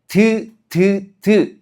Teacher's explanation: 디귿 같은 거 발음할 때 드 이렇게 발음해 보면 혀 끝이 윗니 바로 뒤쪽에 붙었다가 떨어지면서 소리가 나죠.